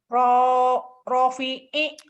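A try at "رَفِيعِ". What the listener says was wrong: Yang panjangin rohnya doang, Bu. Penekanannya salah. Rofi'i gitu doang, Bu. Rofi'i gitu.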